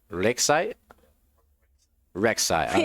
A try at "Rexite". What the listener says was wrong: With the tongue roll, you have to add the tongue roll to it. Otherwise you're saying it wrong. Rexite.